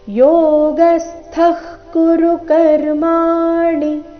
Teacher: ಸ್ಥ ಇಲ್ಲಿ ಥ ಮಹಾಪ್ರಾಣ ರಸ್ವ